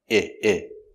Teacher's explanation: Use the short sound, I, I. It's short and the sound is lower. I, I. The sound comes from here.